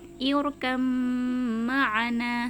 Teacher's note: Tulisannya seperti ini, irkab ma'ana, seperti itu ya. Tapi karena huruf ba dengan mim ini sama-sama makhraj asyafatan, sama-sama makhraj yang keluar dari kedua bibir, maka cara membacanya irkam ma'ana, seperti itu.